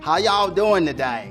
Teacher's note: But if you get down south to the Little Dixie portion, it has a much more of a southern drawl. Elongating those vowels a little bit. And saying y'all every sentence.